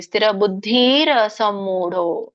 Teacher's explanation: ಕೂಡಿ ಹೇಳುವಾಗ ರ ಆದಮೇಲೆ ಅ ಕೇಳಿಸುತ್ತೆ